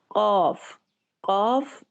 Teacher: कॉफ दो नुक्तों पर मुश्तमिल जो है, इसको जुबान की जड़ से अदा किया जाता है।